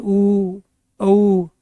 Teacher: जब हम उच्चारण करें तो हमारी जो ओठ की आकृति है ये सर्कल बनाती है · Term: वृत्ताकार